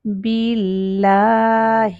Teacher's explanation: تو اللہ کے نام سے پہلے زیر آ جائے تو اس اللہ کے نام کو باریک رکھتے ہیں ، اس کو ابھی لو موٹا نہیں کر سکتے، سکون سے